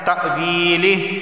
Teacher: یا سے پہلے زیر آیا ہے تو اسے 1 الف کے برابر کھینچ کر پڑھا جائے گا